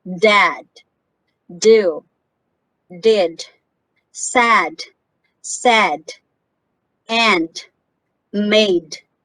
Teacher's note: if you read these words you can feel the vibration of your vocal chords because this is voiced